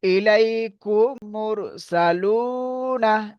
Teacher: মিম সাকিনের পরে যদি মিম আসে, খেয়াল করেন, মিম সাকিনের পরে যদি মিম আসে, তাহলে মিমকে মিমের সাথে মিলিয়ে একালি পরিমাণ গুণনা করে পড়িতে হবে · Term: ইদগামে শাফাবি